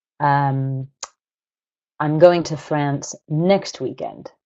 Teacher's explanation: I've emphasized the word next I've put the nucleus of my sentence on that word because I'm contrasting it with a different word like this weekend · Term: nuclear stress